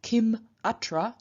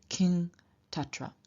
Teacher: word final M remains M before a vowel, but turns into un, i.e. the anuswara, before a consonant